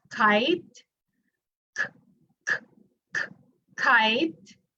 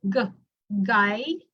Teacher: It's stopping. It's oral. There's a stop when we pronounce the word. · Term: velar